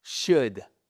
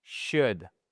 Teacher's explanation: Le l on ne l'entend pas. · Ce n'est pas un ou long suivi d'un l.